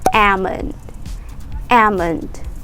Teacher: we don't say the l sound it's like silent l